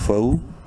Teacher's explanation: واو لین ہے، فا کو شارٹ کر کے پڑھنا ہے